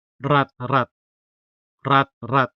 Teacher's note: The stress in rat rat falls on the first syllable.